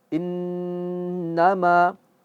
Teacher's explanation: Innama, ketika ma itu keluar dari hidung. Tetapi ketika panjangnya, ma itu tidak hidung lagi. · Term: gunahnya jelas berdengung